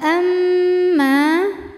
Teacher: bunyi m-nya tahan sampai ada suara masuk hidung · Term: ghunah musyadadah